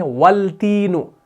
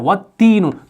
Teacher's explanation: तो अलिफ लाम को नहीं पढ़ा जाता